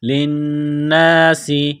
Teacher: نون مشدد ہے، غنہ کریں گے، آواز ناک میں چھپائیں گے، سین میں سیٹی کی آواز پیدا کرنی ہے، سین کو باریک کرنا ہے